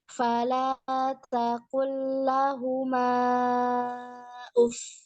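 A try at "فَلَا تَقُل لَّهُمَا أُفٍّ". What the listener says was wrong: Kependekan sedikit. Kayak mau baca uffin gitu kan. Nah, berhentinya di pas bilang. Nah, tapi in-nya nggak ada.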